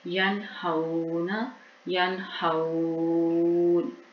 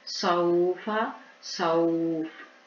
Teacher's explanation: جب ساکن کریں گے نون کو تو ہم 1 الف بھی لمبا کر سکتے ہیں اور 3 سے 4 الف بھی مد کر سکتے ہیں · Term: لین